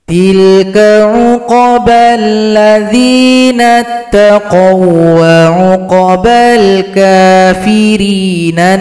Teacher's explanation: Itu satu ketukan, alladzinattaqau, jika digabungkan, huruf waw juga tidak boleh dinasalisasi karena itu hanya idgham mutamathilain; Ini digabungkan tanpa nasalisasi. · huruf waw juga tidak boleh didengungkan, karena cuma idgham mutamatsilain, cuma dilebur tanpa didengungkan.